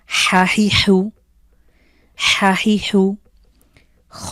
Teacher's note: কন্ঠের মধ্যখান থেকে হলকের মাঝখান থেকে কন্ঠে চাপ দিয়ে উচ্চারিত হয়